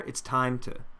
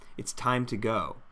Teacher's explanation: When you say it's time to go, make sure that we get that final M consonant before the T there.